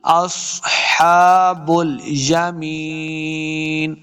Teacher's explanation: اینڈ پہ وقف کرنا ہے, نون ساکن کریں گے